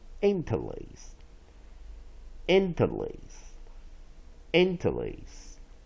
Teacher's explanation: Secondary stress on first syllable, main stress on third syllable.